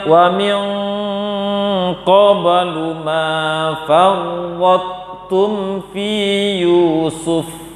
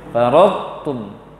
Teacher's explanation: Baca to yang tebal tanpa qalqalah, kemudian baca tu-nya. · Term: idgham naqis